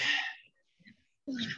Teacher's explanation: Huruf ro, ya, ada takrirnya, ada inhirafnya, sama huruf ha, ya, ada hamasnya, juga suara memanjangnya, kita berikan ha-nya.